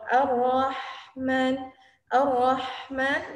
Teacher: Ar-Rahman itu keluar dari tenggorokan tengah. Tengah itu dekat, kalau laki-laki ada jakun di situ. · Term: H kecil